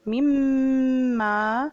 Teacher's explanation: میم پر شد ہم 2 حرکت کے برابر پڑھیں گے